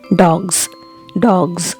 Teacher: if you say dogs, so it's not S in the end, it is Z